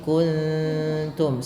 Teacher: Ta itu tipis sehingga nunnya samarkan ke huruf ta. sambil ditahan bunyi dengungannya atau bunyi suara samarannya tadi. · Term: ikhfa